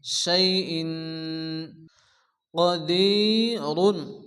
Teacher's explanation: তানবিনের পরে হরফে ইকফার ৫ অক্ষরের মধ্যে কফ আসছে এক আলিফ গুণ্য হবে